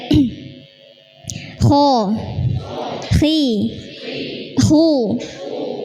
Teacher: Selanjutnya ghain dan kha, itu tenggorokan bagian atas. Nah, jadi ini pertemuan antara pangkal lidah bertemu dengan langit-langit tenggorokan bagian belakang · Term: huruf tebal